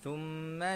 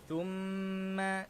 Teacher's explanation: Mim bersabdu sama hukum dia dengan nun bersabdu, iaitu wajibul gunnah. Kita kena baca dengan dengung dua harakat.